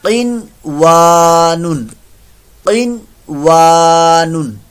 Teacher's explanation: क़ाफ पर मोटा रखिएगा। यहाँ भी कलकले वाली कंडीशन ना बनाइएगा · नून साकिन के बाद वाऊ आ रहा है लेकिन इजहार मुतलिक हुआ, वाऊ अलिफ ज़बर वा अलिफ मद्दा है, क़ाफ पर मोटा रखिएगा।